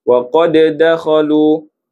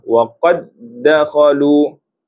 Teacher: Yang pertama qalqalah waqad dakhalu. Yang kedua tidak qalqalah waqad dakhalu.